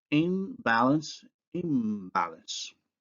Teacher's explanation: N following B, that's an alveolar following a bilabial, and the nasal becomes bilabial. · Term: nasal assimilation